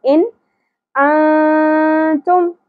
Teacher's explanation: یہاں اظہار ہوگا کیونکہ آگے حروف حلقی میں سے حمزہ آ گیا